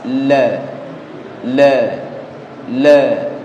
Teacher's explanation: punggung ujung lidah ditemukan dengan gusi yang lurus dengan gigi seri bagian atas. La. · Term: lam